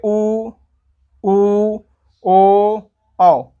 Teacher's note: देखिए मुंह का हो गया, गोल हो गया कि नहीं? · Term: गोलीय वर्ण